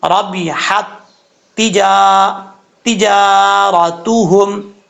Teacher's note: पहली ता के साथ कनेक्ट नहीं करना, दूसरी ता के साथ हा को कनेक्ट करना है